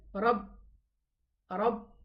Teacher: So we say mirra, mirrabbihi, and the ba has a shadda, so we say rabbi. The ba has shidda character, meaning that it stops, it terminates in its makhraj.